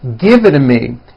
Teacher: the only big change comes from the t's being pronounced as DS and this happens because the T's fall between two vowel sounds if you remember in American pronunciation when T is fall between